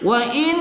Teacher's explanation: Kemudian berikutnya wa in, nun sukun bertemu, nun sukun kita baca wajib dengung, wajib bergunnah